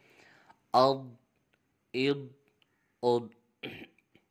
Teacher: بعض لوگ ضاد میں بھی قلقلہ کر دیتے ہیں، تو ضاد حروف قلقلہ میں سے نہیں ہے، اس لیے اس میں قلقلہ نہیں کیا جائے گا